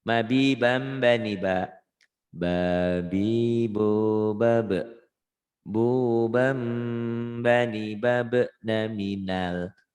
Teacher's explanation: Bubam ini iklab jadi n jadi m